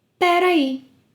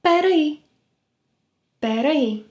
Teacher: “Peraí” is the natural contraction of “Espera aí”